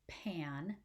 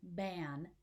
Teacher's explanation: meaning so for example the words pan p-a-n and ban b-a-n those two words are only different when we produce them phonologically by voicing on the first consonant the p or p is not voiced the ba is voiced